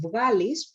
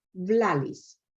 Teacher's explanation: The dominant substitution of the voiced velar fricative is the lateral, as in the word vgalis, produced as vlalis.